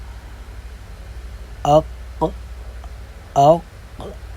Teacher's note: جیسے ہم پریکٹس کرتے ہیں اق اق، آپ دیکھیں کہ آپ کا جو زبان کی جو جڑ ہے وہ اوپر کے تالو کی طرف بلند ہو رہی ہوگی